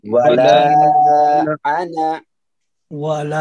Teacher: انا کے نون کو جو ہے لمبا نہیں کرنا